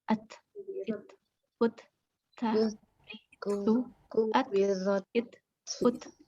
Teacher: dia taknya ada di lidah nih, ujung lidah, ada di belakang gusi atas.